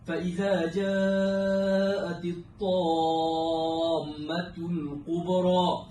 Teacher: Kalimah at-tammatul kubra perlu panjangnya 6 harakat dan disertakan dengan idgham, kerana bacaan ini adalah mat lazim kalimi musaqqal yang mengandungi idgham.